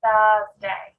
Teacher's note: I put my tongue in between my teeth to make that sound at the start.